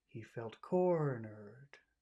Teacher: He felt becomes very small. He felt. Core in cornered becomes very big. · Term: accented syllable